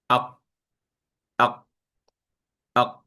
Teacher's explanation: Okey pangkal lidah tu dia ada depan sikit ada belakang sikit. Okey kalau kita tengok bahagian pangkal lidah bertemu dengan bahagian anak tekak keluar daripada situ huruf qaf dia paling belakang